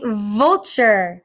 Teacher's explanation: My top teeth touched my bottom lip. And I could feel some air leaking out over my lip. I also felt that it tickled my lip and my throat was vibrating.